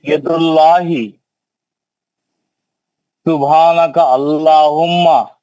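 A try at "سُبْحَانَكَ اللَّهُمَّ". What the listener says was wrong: नहीं सुब्हानका अल्लाहुम्मा नहीं है, सुब्हानका अल्लाहुम्मा काफ के जबर से मिलाओ।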